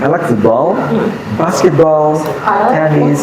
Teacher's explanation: saya suka sepak bola, basket, tenis, tapi yang terakhirnya turun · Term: intonasi